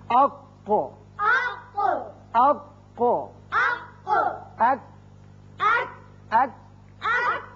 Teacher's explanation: کوے کے حروف دو ہیں، قاف، کاف۔ یہ جو دونوں حروف ہیں زبان کا آخری حصہ کوے کے جو قریب ہے، جب اوپر تالو سے لگتا ہے تو ادا ہوتے ہیں۔ قاف پر کر کے پڑھتے ہیں، کاف ذرا ہٹ کر نیچے کی طرف سے نکلتا ہے اور باریک ہوتا ہے۔